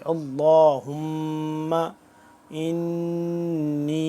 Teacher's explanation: اب یہاں پہ ہم غنہ کریں گے، نون مشدد ہے تو اس کو غنہ کریں گے۔ غنہ میم کی آواز کو ایک الف کے برابر لمبا کرنا، اس کو لمبا تھوڑا سا کریں گے۔